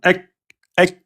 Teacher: Il y a un arrêt total du son avant l'hams. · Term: ashidda